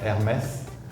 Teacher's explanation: In France, H is almost always silent.